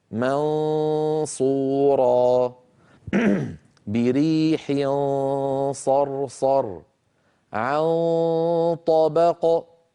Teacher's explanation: يكون صوت النون المخفاه مفخما ان جاء بعده حرف مفخم